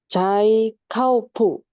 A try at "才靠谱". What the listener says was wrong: Oke, ini cai-nya yang ada angin, kou-nya nggak pakai angin, jadi kebalik ya. Boleh ikutin saya. Cai kou pu. Enggak, cai kou pu. Ya, cai ya, ada 3. Cai kou pu.